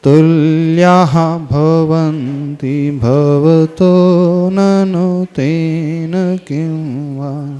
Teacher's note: इसके उच्चारण में जो तृतीय चरण है, तुल्याः के बाद विसर्ग है। तुल्या भवन्ति नहीं पढ़ना, तुल्याः विसर्ग का उच्चारण आना चाहिए।